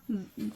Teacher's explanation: सामने के दोनों दांतों के बीच में थोड़ी ज़ुबान को बाहर निकालिए तो ज़ाल अदा हो जाएगी